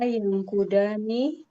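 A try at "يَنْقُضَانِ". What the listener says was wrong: Dan yang kudani, panjang danya.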